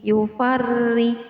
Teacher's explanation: ro di sini dibaca tipis karena ro ditandai dengan harokat kasrah